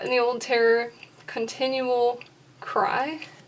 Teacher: And the old is stressed because it's an adjective.